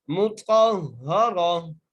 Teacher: अच्छा, आगे फिर वही जो आप ऊपर समझा चुका, इस ता को हा में तब्दील करके पढ़ेंगे। वक़फ़ की सूरत में ये ता जो है हा में तब्दील हो जाती है।